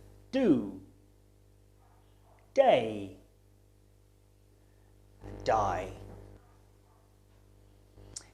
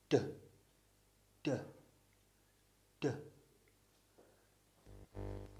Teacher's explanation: your teeth the D sound is made through the mouth and it's voiced which means that you vibrate your vocal cords to make the sound it's defined by the motion of your tongue and it's a · by stopping air flow and then releasing it in this case you stop the air flow with your tongue against the area behind your top teeth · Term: stop sound